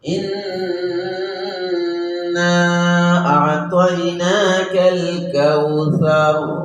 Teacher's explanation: গুণনাটা এক আলিফ হতে হবে। অনেকে আমরা সামান্য গুণনা করি, ইন্না আ'তাইনা, একটু গুণনা করি, একটু না করে গুণনাটা কি এক আলিফ। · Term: ওয়াজিব গুণনা